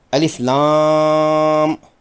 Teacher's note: اس طرح لا کی شکل والے الف مدہ پر 6 حرکات لمبی مد لازم ہوگی۔